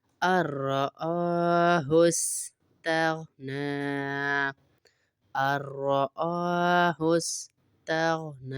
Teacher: نون نہیں پڑھیں گے، را سے ملائیں گے۔